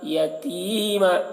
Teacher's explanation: تی کو کھینچ رہے ہیں، یا مدہ ہے